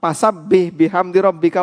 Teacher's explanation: Anda akan dikatakan salah ketika membaca itu karena huruf Fa anda ganti dengan PA